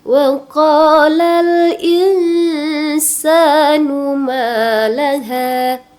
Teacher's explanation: Numalaha ma mad thabi'i panjangnya dua harakat. Ha juga dua harakat hannya ya.